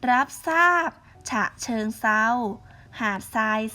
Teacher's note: เปลี่ยนทรเป็นเสียงซอ · ควบกล้ําไม่แท้จะออกเสียงแค่พยัญชนะตัวหน้าค่ะ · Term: ควบกล้ำไม่แท้